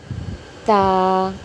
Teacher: زبان کی نوک سامنے والے اوپر کے 2 دانتوں کی جڑ میں لگے تو تا ادا ہوتا ہے۔